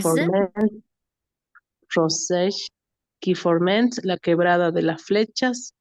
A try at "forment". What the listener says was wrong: Ojo con la terminación en ENT, ¿sí? Forme. Bien, nos quedamos en la consonante anterior. Forme.